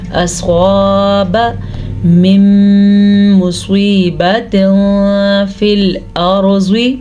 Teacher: صاد زبر الف صا، الف مدہ کو لمبا کرنا ہے